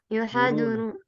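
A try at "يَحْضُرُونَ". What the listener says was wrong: Ini haknya ini harusnya sukun ya. yahduruna.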